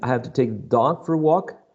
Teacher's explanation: So this is falling intonation. This is new information.